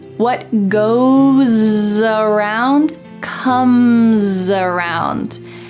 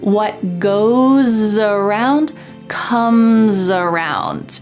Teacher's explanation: Here we have two instances where the S at the end of goes is followed by a vowel. So that S is going to sound like a Z in American English.